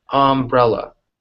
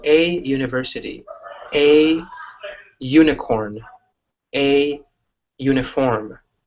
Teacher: It's an ah sound, not a U sound like university. It's just an ah sound.